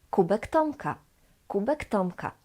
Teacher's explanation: So the K just stays the same because both K, K, and T, T are voiceless.